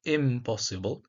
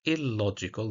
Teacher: the prefix in changes to match the place of articulation of the following consonants. In plus possible becomes impossible, here bilabial. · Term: Assimilation